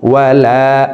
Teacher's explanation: জবরের বাম পাশে খালি আলিফ মদের হরফ, ডান দিকের হরকতকে এক আলিফ টানিয়া পড়িতে হয়। তো আমরা এই লাম হরফকে এক আলিফ টেনে পড়ব।